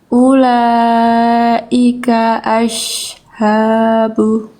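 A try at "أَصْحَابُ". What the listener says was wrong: Nah, itu masih ash, jangan ash. Jadi itu masih shin. Kenapa bisa jadi shin? Jadinya makhraj shin itu. Ash, bukan ini yang naik. Ini turunin. Yang naik yang ini. Ashabu. Jadi shot itu yang naik pangkal lidah. Untuk nebelin shot itu yang tumpuan tebalnya tuh ini.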